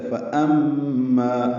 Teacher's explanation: پڑھتے ہیں حمزہ کی آواز واضح نہیں نکالتے، یہ غلط ہے، فَأَمَّا حمزہ بالجہر ادا ہوگا، مجہورہ ہے ، یہ میم مشدد پہ غنہ ہے اور ما الف مدہ